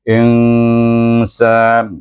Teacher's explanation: dibaca dengan Ikfa Hakiki dengan dengung dua harakat